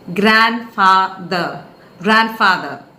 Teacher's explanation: there are three syllables and the first syllable is to be stressed